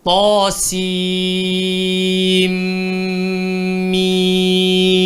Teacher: nun nak berjumpa dengan mim. Maka dia kena dengung sebanyak 2 harakat. Jadi mim ni pula dekat tengah-tengah dia ada ya mat, maka dia kena jadi 6 harakat juga.